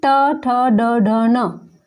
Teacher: टवर्ग में ट ठ ड ढ न, मूर्धा, हमारे मुंह के अंदर जो गड्ढेनुमा भाग होता है